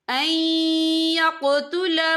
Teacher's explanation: یہ دیکھیں یہاں نون ساکن ہے، نون ساکن کے بعد جو ہے یا آ رہا ہے، یہاں جو ہے حروف یرملون میں سے ہے تو یہاں پر ادغام ہوگا، تو ہم اسے تھوڑا سا غنّے کے ساتھ پڑھیں گے۔